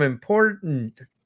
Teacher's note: it's not guttural it's glottal so it's a glottal stop